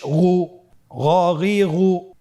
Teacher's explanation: গন হরফটি মোটা অক্ষর উচ্চারণ করার সময় অবশ্যই মোটা করে বলতে হবে